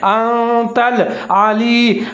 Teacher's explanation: عین کا خیال رکھنا ہے، اس کو موٹا پڑھنا ہے